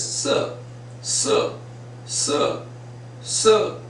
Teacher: according to British received pronunciation, speaking that or sounding that r in certain terms is wrong